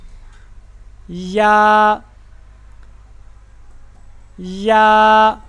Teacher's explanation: जुबान का दरमियान वाला हिस्सा तालू की तरफ उठेगा साथ में लगेगा नहीं